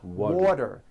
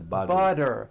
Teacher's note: The T turns into a D and the whole word is voiced.